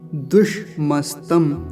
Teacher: पहले तो मूर्धन्य सकार हलंत है फिर दंती सकार हलंत है